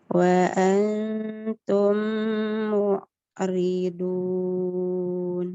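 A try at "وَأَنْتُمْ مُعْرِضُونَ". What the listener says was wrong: Coba obatnya tebalkan. Jangan dun. Angkat lagi pangkal lidahnya ya, supaya lebih tebal. Nah, seperti mu'ribun, seperti itu ya, tebalkan.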